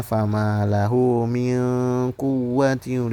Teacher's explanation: nun mati bertemu huruf qof yaitu huruf ikhfa maka dia dibaca samar